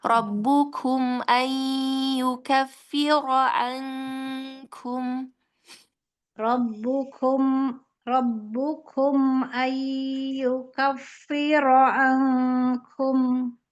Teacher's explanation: Kafnya di sini mau ada sifat hamsnya sedikit ya